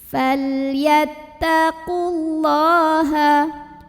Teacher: Berikutnya ada lam mutlak lagi ya. Ada lam sukun yang di hadapannya bukan lam, bukan juga ro, maka dibaca lamnya jelas.